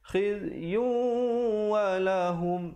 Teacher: idgham bi gunnah, tanwin bertemu waw. Baik. Jangan lupa dengungkan di situ. Asalnya khizyun, tapi bila bertemu waw jadi khizyun walahum.